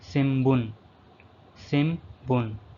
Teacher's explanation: In this word, the N syllable pronounced as M